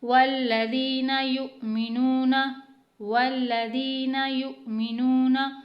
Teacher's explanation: اگلی آیت دیکھتے ہیں، والذین یؤمنون والذین یؤمنون، واو لام زبر ول لام زبر لا واللہ، اب یہاں پہ کیونکہ حمزہ وصلی آ رہا ہے یعنی خالی الف ہے تو اسے ہٹا دیں گے، واو کو ڈائریکٹ ہم لام سے ملائیں گے